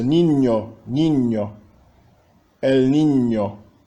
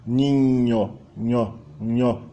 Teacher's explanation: Há um toque, um contato bem claro da língua com o palato dianteiro